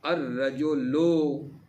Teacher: را مثلا حروف شمسی میں سے ہے، ٹھیک ہے، تو ادغام ہو جاتا ہے لام کا حروف شمسی میں